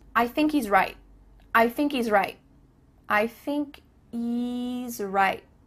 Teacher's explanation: There's no H happening here. I thinky. Thinky.